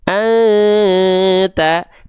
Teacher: Ketika dia disamarkan dan didengungkan, pelafalannya sambil bersiap-siap melafalkan huruf ta nih. Anta, tuh lidah kita dia ngegantung kan? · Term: ikhfa